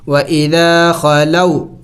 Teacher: واو ساکن سے پہلے جب زبر آ جائے اور یا ساکن سے پہلے جب زبر آ جائے تو اسے حروف لین کہتے ہیں، اور حروف لین کو جلد پڑھنا ہوگا. اس کے پڑھنے کا طریقہ یہ ہے کہ اس کو جلد پڑھا جائے گا، ان کو لمبا نہیں کیا جائے گا